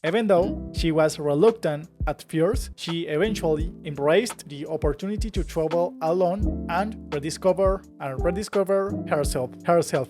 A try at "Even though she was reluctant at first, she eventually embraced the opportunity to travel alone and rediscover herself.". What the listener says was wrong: So almost perfect. So I'll read it, but there isn't really a word you pronounced wrong. It's just an accent,